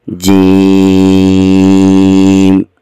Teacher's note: یا کو لمبا کیا جائے گا، اسی حرف یا کے اوپر ہی مد بھی ہے، جیم، آخر والے میم پر مکمل طور پر آواز بند ہو جائے گی، دونوں آپس میں مل جائیں گے